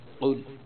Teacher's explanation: آگے قل اعوذ برب الفلق، قل میں قاف موٹا ہے، قاف گلے کے درمیان سے ذرا سینے کی طرف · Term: موٹی قاف